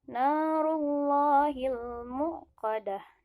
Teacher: Mad tabi'i, panjangnya dua harkat. Rullahi, hukumnya adalah tafhim, ditebalkan bacanya harus ditebalkan.